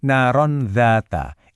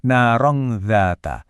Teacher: Tapi kita baca dengan dengung samar di tengahnya, narongdzata. Bunyi n yang disembunyikan itu jadi jembatan yang indah ke huruf dzal.